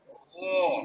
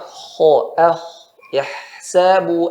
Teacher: Bedanya gho dan kho, dia secara tempat sama. Ya. Secara sifat banyak yang sama. Tapi di sini kho ada angin yang keluar